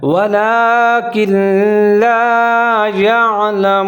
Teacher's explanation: یہاں نون بالکل ختم ہو جائے گا کیونکہ آگے لام کے اوپر شد ہے. وَلَكِنْ لَا يَعْلَمُونَ، یہاں عین کا آپ نے خیال کرنا ہے، تو يَعْلَمُونَ.